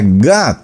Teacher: en inglés ellos hacen otra sílaba un poco mezclada entre la A y la O, que no es ni A ni es ni O, y se pronuncia God.